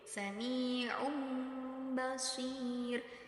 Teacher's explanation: dah tanwin bertemu dengan huruf ba dan sama seperti yang tadi cara membacanya yaitu dengan mengganti dumah tanwin tersebut menjadi huruf mim